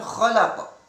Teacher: Di sana terdapat hukum bacaan qalqalah kubra yang pantulannya besar.